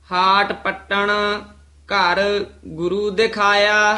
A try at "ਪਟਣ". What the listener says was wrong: ਕਿਤੇ ਵੀ ਪਟਣ ਬੋਲਣਾ ਹੈ, ਪੱਟਣ ਨਹੀਂ ਕਹਿਣਾ। ਹੱਟ ਪਦ ਕਿਤੇ ਆ ਜੇ ਉਹ ਕਸ ਕੇ ਆ, ਪਟਣ ਪੋਲਾ ਹੈ।